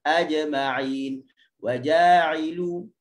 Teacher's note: Yang kedua kesalahannya adalah dia telah memberi angin pada huruf jim. Yang mana huruf jim bukan bersifat dengan angin.